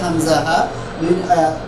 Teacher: কণ্ঠনালীর শুরু থেকে দুইটি হরফ উচ্চারিত হবে হামজা হা